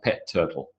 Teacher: the first t is sacrificed. It's not there anymore.